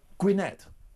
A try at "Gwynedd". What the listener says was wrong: TH, Gwynedd.